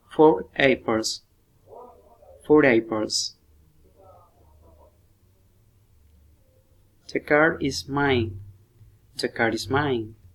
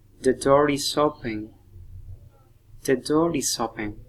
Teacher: If we pronounce the words separately, we do not use an R sound between them, but we pronounce them together. We say a R sound between the words because it makes the words easier to pronounce quickly. For example, 4 apples. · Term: linking R